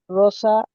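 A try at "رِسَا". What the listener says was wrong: আপনি কি আপনি কি রসা পড়লেন? আপনি রজের রজের র পড়লেন না রজের রি পড়লেন? তাহলে রসা পড়ছেন।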